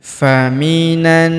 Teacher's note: Kemudian faminan, huruf na langsung sambung masuk ke huruf na yang ini yang berharokat tasydid, kita tahan dan tekan dan kita dengungkan 2-3 harokat